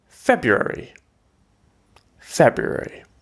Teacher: you can drop the first r if you like